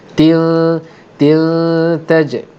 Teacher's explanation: Tanwin bertemu dengan ta ialah hukum ikhfa hakiki, maka akan didengungkan dengan dengung 2 harakat.